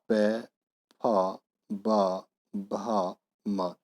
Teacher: जिन वर्णों का उच्चारण होठों से होता है उन्हें ओष्ठ वर्ण बोला जाता है